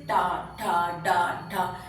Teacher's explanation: टवर्ग के भी व्यंजन इसी तरीके से टा, ठा, डा, ढा। आप देखिए जीवा क्या करती है, ऊपर उठकर मूर्धा उस भाग का स्पर्श करती है।